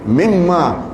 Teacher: Nun mati bertemu dengan mim, kan dalam ilmu tajwid namanya idgham ma'al ghunnah, mimma, sehingga ditulis mim lalu mim kedua bersabdu.